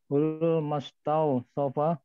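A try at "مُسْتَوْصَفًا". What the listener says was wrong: Mimnya dhammah. Mustawsafa.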